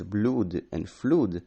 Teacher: Some words with long U though, such as blood and flood, shortened and became a short U